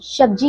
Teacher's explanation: पहाड़ी क्षेत्र में रहने वाले लोग प्रायः स को श की तरह उच्चारित करते हैं